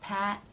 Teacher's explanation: the tongue has moved up into position cutting off the flow of air Pat and the second part the tongue releases and the air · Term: stop consonants